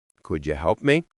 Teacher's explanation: if you say it flat, could you help me, it sounds bored or even annoyed